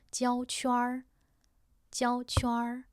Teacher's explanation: Sounds like 圈 儿 is just one syllable. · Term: retroflex final